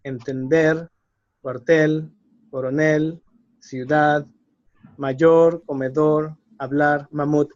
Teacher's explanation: the word has to be stressed at the very end